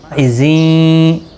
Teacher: تنوین کے بعد یارملون کا یا ادغام مع الغنہ ہوگا۔